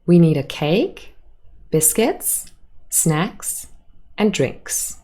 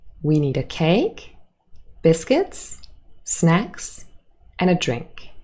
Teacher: we have a rising intonation on all of the items apart from the last